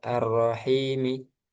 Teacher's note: ketika diwasal, maka ar-rohi tetap dua harokat.